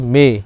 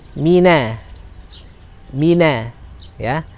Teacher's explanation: dia mim kasroh, punya tipis karakternya ya. Dan maka tidak boleh mengucapkan seperti me